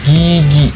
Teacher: Suara keluar dari pangkal lidah di belakang mulut bersuara.